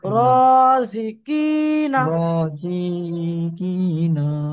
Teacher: এক আলিফ পরিমাণ টান দিয়ে র পড়তে হবে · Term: আলিফ মাদ্দা